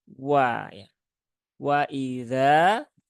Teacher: Nah, sehingga dia juga harapannya tidak ditebalkan menjadi wa ya, tetapi wa. Jadi huruf waw ini satu-satunya huruf yang fathah, tetapi untuk memulai mengucapkan dia harus dimonyongkan dulu mulutnya. Karena waw ini adalah representasi dari harokat dhammah.